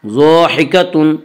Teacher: ضاحکۃ ضاد کو پر پڑھیں گے، ضاد حروف مستعلیہ میں سے ہے